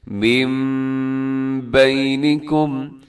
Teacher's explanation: اور اس طرح دوسری مثال دیکھیے گا، جیسے من بینکم، یہاں نون ساکن ہے اور نون ساکن کے بعد بینکم کے شروع میں با ہے، تو یہاں پر بھی اقلاب کا رول لگے گا۔ ہم نون نہیں پڑھیں گے بلکہ نون کو چینج کر کے ہم میم پڑھیں گے